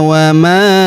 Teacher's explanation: huruf ma kita panjangkan empat atau lima harakat karena di depan huruf ma terdapat alif yang di atasnya terdapat tanda garis bacaan panjang empat atau lima harakat.